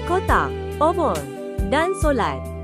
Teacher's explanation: Semasa bunyi ini dihasilkan, pita suara bergetar. Bahagian belakang lidah dinaikkan separuh tinggi menghampiri lelangit lembut. Lelangit lembut dinaikkan untuk menutup rongga hidung. Bibir berada dalam keadaan bundar. Contoh perkataan yang mengandungi bunyi O ialah kotak, obor dan solat. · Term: vokal belakang separuh sempit